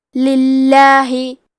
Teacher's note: کلمت للہ کی شروعات میں لام کے نیچے زیر ہے، تو لفظ الجلالہ کے لام کا حکم ہے ترقیق، تو ہم حرف اللام کو پتلی آواز میں پڑھیں گے.